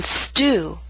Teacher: starts a word or a stressed syllable with st or St the true T loses that strong puff of air